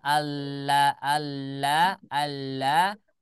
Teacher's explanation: dari asalnya rahangnya rahang tipis rahangnya istifal maka berubah menjadi istila